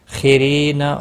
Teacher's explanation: مل لام ساکن کو ہلانا نہیں، حمزہ کے اوپر کھڑی زبر ہے، ایک الف کے برابر کھینچ کر پڑھیں گے۔ خیرین خا حروف مستعلیہ میں سے پر پڑھا جائے گا، را زیر کی وجہ سے باریک ہوگا۔